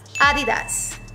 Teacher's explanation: the accent or whatever you call it is on the first syllable A